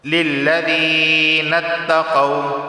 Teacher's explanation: یا سے پہلے زیر ہے تو اسے ایک الف کے برابر کھینچ کر پڑھا جائے گا۔